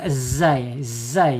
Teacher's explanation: Kemudian ada di al-istifal ya. Lidahnya tidak terangkat.